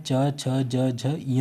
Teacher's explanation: जिन व्यंजनों का उच्चारण तालू और जीभ की सहायता से होता है वे तालव्य व्यंजन कहलाते हैं